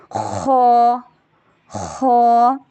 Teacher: خا گلے کے اوپر والے حصے سے زبان کی جڑ کوے پر تالو کی طرف بلند کر کے اس کو موٹا ادا کریں گے۔ خا، خا ایک الف کے برابر مد اصلی کریں گے، یعنی اس کو ایک الف کے برابر لمبا کریں گے